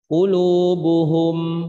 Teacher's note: Jadi tetap akan ada gunnah cuman sedikit Jadi kalau misalkan dibaca qulubuhum, maka mimnya nggak jelas. Mesti ada sedikit aliran gunnah, aliran dengung.